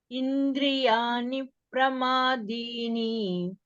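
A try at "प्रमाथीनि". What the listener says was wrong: Not dini. Teeni. Indriyani pramathini.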